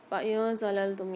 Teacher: نون ساکن کے بعد زا آ رہی ہے، غنہ کر کے پڑھیں گے